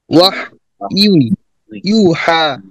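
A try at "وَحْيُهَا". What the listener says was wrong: এটা একটু ত্রুটি আছে, ইউই হবে। ইয়া ইয়া দুই পেশ ইউই ইউই।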